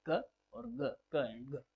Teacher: जैसे ही sudden release होती है एयर, और फिर आपको जो साउंड देखने को मिलता है वो है क और ग